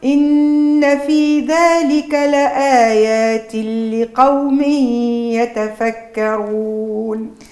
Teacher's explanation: كان النون مشات وعوضنا بلام ساكنه ادغمت في اللام المتحركه بالكسر · إن في ذلك لآيات اللي على تنوين الكسر نون ساكنة، يعني بعدها حرف اللام الإدغام الكامل، هنا انسى النون الساكنة، لا تجيب هالي على مستوى الفم اللسان ولا الجزء الخيشومي منها، لآيات اللي يعني كأن النون مشيت وعوضناها بلام ساكنة أدغمت في اللام المتحركة بالكسر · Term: الا غام الكامل